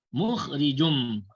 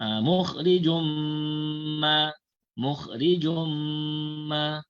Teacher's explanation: Idgham ma'al gunnah cara bacaannya bunyi tanwin tadi tu dimasukkan ke dalam mim, kemudian ma'al gunnah.